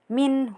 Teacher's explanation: Kemudian ada hukum idhar halqi. Karena nun sukun bertemu dengan hu jadi dibaca jelas